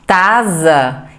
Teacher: se ele fala tasa ele está anteriorizado o som do c e provavelmente ele também vai falar da linha ao invés de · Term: anteriorização